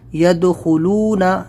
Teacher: دال کے اوپر ساکن ہے، یہاں پر ہم قلقلہ کریں گے، دال قلقلہ لیٹر ہے جب اس کے اوپر جزم ہو۔